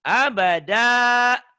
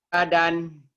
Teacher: Abadan jika dihentikan abada. 2 fatah dibaca 1 jika dihentikan itu namanya mad iwad